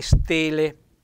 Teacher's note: stele con la è aperta